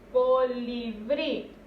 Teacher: aquí en brí es donde recae la mayor fuerza de voz.